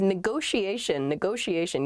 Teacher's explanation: there are two T's in this, but neither T is a hard T. They're both very soft, that sh sound, because they're followed by the I and another vowel, the she, a negotiation.